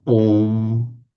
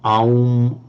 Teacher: Now, possibly, they have actually, in the pronunciation, applied sandhi to the a and the u, because the a and the u automatically, by sandhi, become o. So it's pronounced om.